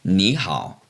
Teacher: knee third tone which means you and how also third tone which means good